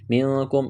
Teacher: اخفا کریں گے، نون ساکن کے بعد کاف ہے، کاف کو باریک کرنا ہے